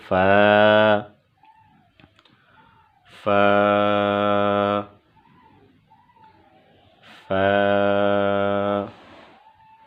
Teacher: فا، فا، فا، فا کا مخرج فا کی ادائیگی کی جگہ اوپر والے درمیان کے جو 2 دانت ہیں ان کا سرا اور نیچے کے ہونٹ کا اندرونی حصہ یعنی تر حصہ، اس سے فا ادا ہوگا